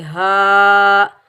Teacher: اس ہا کو ہم سینے سے ادا کریں گے، ہا کے اوپر کھڑا زبر ایک الف کی مقدار کھینچ کر ادا کریں گے، ہا۔ زال کو ہم نرمی سے ادا کریں گے، زال کے نیچے زیر بغیر کھینچے پڑھیں گے، زی۔